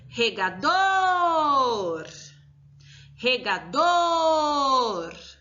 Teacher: A sílaba mais forte da palavra regador é o dor